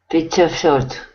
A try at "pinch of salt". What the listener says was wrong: Okay, that sounds not bad at all. Not bad. Okay, very good.